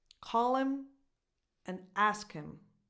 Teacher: The stress goes on the verbs. Call, ask.